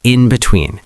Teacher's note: The in carries a little extra weight. · Now let me talk about pronunciation briefly, because many learners say between and in between in the same way without giving the in any stress. When you use in between to emphasize the gap or middle space, the in often gets a slight stress.